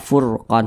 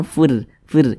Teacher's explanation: huruf ro dibaca tebal dibaca takhim Nah kenapa dibaca tebal karena ada hurufur sukun yang sebelumnya ada